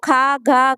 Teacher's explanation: కంఠం నుండి పుట్టే అక్షరాలు కంట్యాలండి